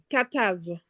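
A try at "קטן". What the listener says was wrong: Non, non, c'est un noun qu'à la fin.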